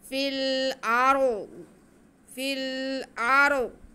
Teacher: फिल, फिल, आगे हमज़ा पे ज़बर और रा साकिन, तो हमज़ा को हम रा के साथ मिलाएंगे और रा को पुर पढ़ेंगे क्योंकि रा से पहले ज़बर है